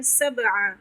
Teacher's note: बा पे साकिन है, कलकला करेंगे।